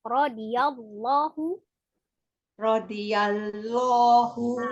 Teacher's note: Al-jalalahnya tebalkan tapi tidak merubah menjadi huruf waw ya, tetap hurufnya lam.